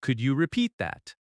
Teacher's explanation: Your voice rises gently at the end because it is a question. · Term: rising tone